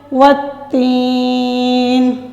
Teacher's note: نون کے نیچے زیر آ رہی ہے، نون کو ساکن کر دیں گے